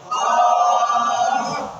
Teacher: জিহ্বার গোড়া তার বরাবর উপরে তালুর সঙ্গে লাগাইয়া একটি হরফ উচ্চারিত হয়